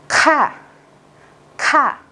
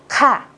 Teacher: Gần giống chữ khờ nhưng các bạn bật hơi hơn.